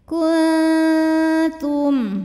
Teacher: aliran suara dari mulut masih jauh lebih banyak dibandingkan dengan suara yang masuk hidung. Jadi dengungnya masih sedikit.